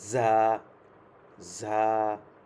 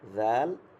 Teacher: জাল হচ্ছে একদম নরম মৃদু, শব্দটা মৃদু, বাতাস বের হবে